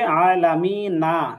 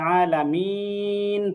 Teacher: তো জবর এই শেষের হরফে আমরা যদি অক্ষ করি, তাহলে শেষের হরকতটা জজম করে পড়তে হয়। এখানে মূলে থাকবে আলামি না, কিন্তু এই অক্ষটা করার কারণে এটা আলামিন পড়তে হবে।